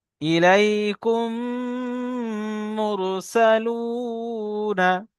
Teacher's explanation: মিমকে মিমের সাথে মিলিয়ে একালি পরিমাণ গুণনা করে পড়তে হবে। একে ঈদগামের সাফাবি বলে।